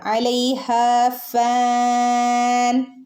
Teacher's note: ഹാൻ്റെ കൂടെ ഒരു അലിഫ് ഉണ്ട്, 2 ഹറക്കത്ത് നീട്ടിക്കൊടുക്കുക